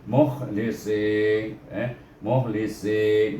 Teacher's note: si, tapi bertemu dengan ya di sini jadikan dia mat asli, jadi panjang bunyinya si, tapi tebal sikit sad tu